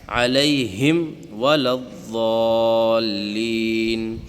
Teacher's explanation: اظہار شفوی میں غنہ نہیں ہوگا بلکہ اس کو ظاہر کر کے پڑھنا ہے